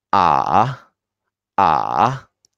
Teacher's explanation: Tone 3, much lower. You feel the chest is vibrating. It's much lower and it's quite longer compared to the other 3 tones.